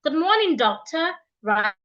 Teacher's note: Rising tone when greeting someone and you are mentioning the name of the person or the person's title